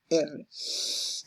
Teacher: Por ejemplo, la L. Vibrantes se articulan mediante el contacto del ápice de la lengua una o más veces con la zona alveolar